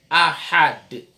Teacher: Jadi cara wakafnya bunyi dal itu kentara. Ahad. Karena dia adalah huruf qalqalah.